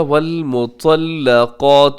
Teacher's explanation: اس میں طا موٹا پڑھا جاتا ہے۔ طا ہمیشہ موٹا پڑھا جاتا ہے، اسے کہا جاتا ہے حروف مستعلیہ۔